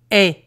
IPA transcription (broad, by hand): ɛ